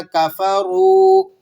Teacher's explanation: 1 الف کے برابر کھینچ لینا ہے کیونکہ یہ واو مدہ کہلاتی ہے۔ واو سے پہلے پیش ہو، واو ساکن ہو تو واو مدہ کہلاتی ہے۔